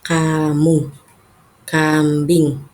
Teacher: Huruf K itu cara pengucapannya yaitu pangkal lidah pangkal lidah menyentuh langit-langit lunak.